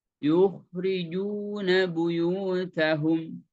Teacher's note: dinaikkan Sisi pangkal lidahnya dan suaranya benturkan ke langit-langit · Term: mufakham